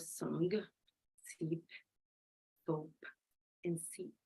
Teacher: now you can notice that the air flows that's why it is called a fricative